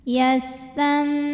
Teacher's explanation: maka nun sukun bunyinya diganti bunyi mim sukun jadi tam disertai dengung, ditahan. Yastambitu tu mad tabi'i zahiri karena waw sukun didahului dhammah maka panjang to-nya 2 harokat. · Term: iqlab